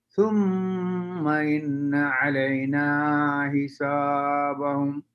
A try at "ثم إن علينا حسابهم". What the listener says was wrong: Don't forget غنى please. ثم إن علينا حسابهم. Two غنس, two green.